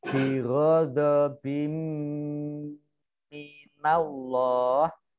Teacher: Allahnya dibaca tebal karena di depannya fathah.